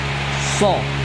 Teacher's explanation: huruf so itu bibirnya maju sedikit itu ketika dia berharokat dhammah